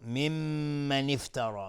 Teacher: می مشدد 2 حرکت غنه میدیم. ممن افترا را حکمش استعلاء است چون فتحه داره و الف هم تابع را غلیظ تلفظ میشه.